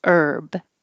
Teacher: Herb, the thing you eat, there's no H. Just start with the E, herb. And you don't have to say the B, herb.